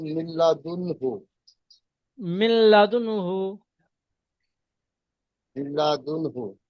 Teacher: নুন সাকিনের হরফে পরে হালকি হালকি 6টির মধ্যে থেকে হা এসেছে, তাই তানবিন ও নুন নুন সাকিনের সাকিনকে পরে তাড়াতাড়ি পড়তে হবে, বিনা গুণায়, বা বিনা গুণায় নুন তাড়াতাড়ি সাকিনের পড়তে পরে হবে। হরফে হালকি 6টি অক্ষরের মধ্যে হা এসেছে তাই বিনা গুণায় জাহির করে তাড়াতাড়ি পড়তে হয়। · নুন সাকিনের পরে হা এসেছে তাই নুন সাকিনকে মিলিয়ে বিনা গুণায় পড়তে হয়। দেখেন, নুন সাকিনের পরে হা এসছে, হরফে হালকি 6টি অক্ষরের মধ্যে হামজা, আইন, গয়ন খনের মধ্যে থেকে হা এসেছে, তাই তানবিন ও নুন সাকিনকে আওয়াজকে তাড়াতাড়ি বিনা গুণে পড়তে হবে, একে ইজহার বলে।